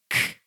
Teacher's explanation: When I'm saying k, think about what your lips and tongue and teeth are doing. This one is unvoiced and it's a stop sound. It cannot go on forever.